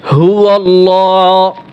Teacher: এখানে আল্লাহর লাম মোটা হবে। এইখানে ভুল করে যদি আপনি পাতলা পড়েন, হুয়াল্লাহ পড়েন, তাহলে তো গুনাহ হবে।